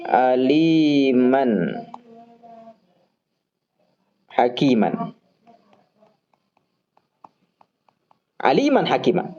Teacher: Di kata man ada tanwin nih. Nah, tanwinnya itu hanya kedengaran kalau kita sambungkan antara kata aliman dengan hakiman. Kita baca aliman hakimah, terdengar suara an.